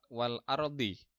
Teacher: Karena ro-nya disukun atau mati sebelum ro sukun berupa harokat fathah, maka ro dibaca tebal. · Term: ro tafkhim